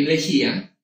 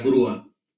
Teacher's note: el golpe de voz recae en una cerrada, la palabra se va a separar, la U con la A.